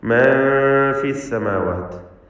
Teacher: സാക്കിനത്തായ നൂനിന് ഇഖ്ഫ ഹഖീഖി നൽകി, മറച്ച് മണിക്കുക. മണിക്കലിൽ തർക്കീഖ് വേണം, നേർപ്പിച്ചുകൊണ്ടുള്ള മണിക്കൽ.